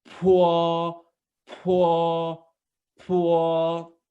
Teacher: you will pronounce it as a p but more aspirated sound